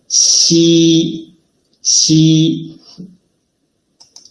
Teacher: When Xi is pronounced, the surface of tongue approaches the hard palate without reaching it, leaving a gap in between.